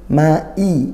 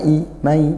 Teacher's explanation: jangan lemas, ditahqiqkan, disyiddahkan kuat hamzahnya